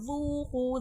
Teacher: ज़ू में वाव मद्दा हो रहा है, क़ू में भी वाव मद्दा हो रहा है, वाव साकिन से पहले पेश है, खींच के पढ़ा जाएगा